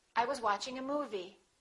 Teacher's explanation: That's your first thought group. The focus word would be movie.